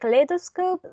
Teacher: in the word kaleidoscope, the stress was on the second syllable, lay.